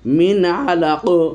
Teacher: মিন আলাক, নুন সাকিন এরপর আইন এসেছে এজহারের অক্ষর, এই যে নুন সাকিনকে আমরা স্পষ্ট করছি কোনো প্রকারের গুন্না ছাড়াই। মিন আলাক, আলাকিন ছিল, আইন জবর লাম জবর আলা কবদি, কিন্তু আলাকিন, কিন্তু আমরা অক্ফ করবো এই জন্য তানমিনকে ফেলে দিচ্ছি।